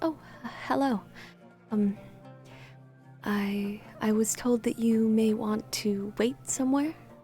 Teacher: speaks in a very soft but breathy voice